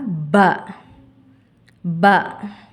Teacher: இரு உதடுகளின் ஈர் பகுதியிலிருந்து ஒலிக்கப் பெறுகிறது. உதாரணமாக ப.